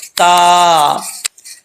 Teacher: زبان کی نوک اوپر والے دانتوں کی جڑوں سے لگے گی تو تا پڑھا جائے گا، ٹھیک ہے، لیکن زبان اوپر کی طرف نہیں اٹھے گی۔